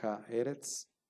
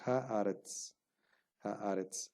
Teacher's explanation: Y hay este cambio vocálico entre dos vocales, ¿no? Una segol, que es una vocal breve, se transforma en un kametz, que es una vocal larga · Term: alargamiento